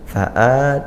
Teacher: Fa'a panjangnya satu alif atau dua harokat. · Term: mad badal